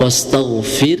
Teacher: pada huruf ro wastagfir nah itu dibacanya tarkik tipis ya